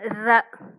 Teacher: மேல் அன்னத்தின் மைய பகுதியை உரசுவதால் ரகரம் தோன்றும். ஸோ பாருங்க, மேல் அன்னத்தின் மைய பகுதினா நடுப்பகுதி, நடுப்பகுதினாலும் மைய பகுதினாலும் ஒன்று தான். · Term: வல்லின ரகரம்